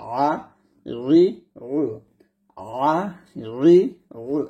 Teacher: আইনটা আপনার গলার মাঝখান থেকে চাপ দিতে হবে, একটু চাপ দিয়ে চিকন করে উচ্চারণ করবেন